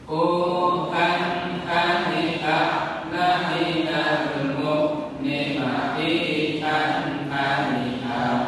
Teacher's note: pengucapan huruf hamzahnya diperbesar powernya, ada sifat syiddah ya, di kuat.